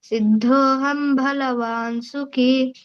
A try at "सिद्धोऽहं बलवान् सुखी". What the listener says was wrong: బాకు ఒత్తులేదప్ప బలవాన్ అంతే భా లేదు సిద్ధోహం బలవాన్ సుఖీ